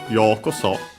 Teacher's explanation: The accent is on the yo, so high and everything else low.